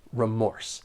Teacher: there are two syllables and the stress is on that second syllable remorse keep in mind that the first syllable is not stressed